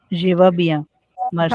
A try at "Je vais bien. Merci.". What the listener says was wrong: Bravo. Parfait. Très bien.